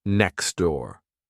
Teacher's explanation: But in casual American English, it becomes next door. Here, the T disappears, and the two words are linked together